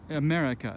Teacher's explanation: the vocal stress falls on the second syllable